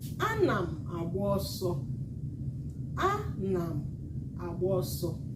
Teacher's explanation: Anam, high, low, low, high, high, mid.